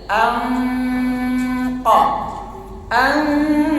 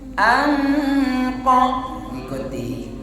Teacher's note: Kalau nun mati bertemu qa, maka posisi kita dalam posisi qa. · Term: ikhfa